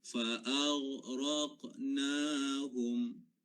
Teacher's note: Satu, dia sifatnya isti'la. Dan kemudian ghain, dia sifatnya adalah rakhawah. Dia kena alirkan.